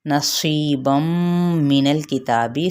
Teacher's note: صاد حروف مستعلیہ میں سے ہیں، جس کا مطلب ہے اسے ہر کنڈیشن ہر حالت میں پر ہی پڑھا جائے گا